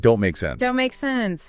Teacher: In fast everyday speech, he pointed out that the T at the end of don't, right? And sometimes even the K sound in make, they can become so weak that they practically vanish · The T is gone. The K is almost gone.